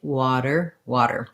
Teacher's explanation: You don't want wader, no strong D, just nice and light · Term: flap T